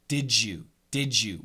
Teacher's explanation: we make the D and the Y we make it a J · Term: blending